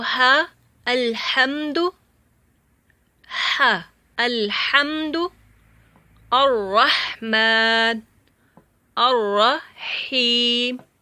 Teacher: ہا جو ہے یہ بھی گلے کے سینٹر سے ادا ہوتا ہے